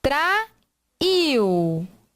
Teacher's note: nós temos a última sílaba forte terminada em U